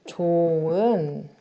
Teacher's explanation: 좋다 할 때 그 좋이라는 어간이 있어요. 그 어간의 받침 히읗이 그 뒤에 오는 어미, 모음으로 시작하는 어미와 만났을 때 히읗 탈락이 일어나서 좋은이라고 발음되는 거. 이 히읗 탈락의 경우에는 표기에는 그대로 이렇게 적지만 발음할 때만 히읗 탈락이 일어난다는 점.